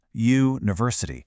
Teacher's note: It has that U sound which is a consonant.